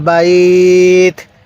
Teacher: এখানে জের আছে তা এর নিচে আমরা জেরটিকে বাদ দিয়ে দিব ওয়াকফের কারণে তা এর মধ্যে আমরা জজম দিয়ে দিব